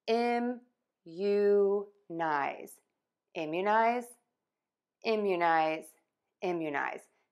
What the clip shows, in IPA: ɪmjuˌnaɪz